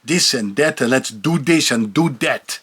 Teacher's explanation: The TH becomes a D